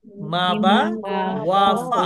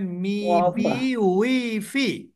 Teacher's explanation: এই চারটা অক্ষর কিন্তু ঠোঁট থেকে উচ্চারিত হয়।